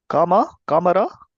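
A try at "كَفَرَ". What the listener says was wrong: No, no, it's fa, not meme.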